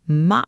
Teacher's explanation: A high, tense, broken tone, ma, that's a horse.